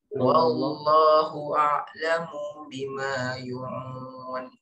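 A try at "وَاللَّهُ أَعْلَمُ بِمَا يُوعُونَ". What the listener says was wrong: Panjangin. Nah, yang saya mau garis bawahi ya, akhirnya hati-hati panjang pendeknya.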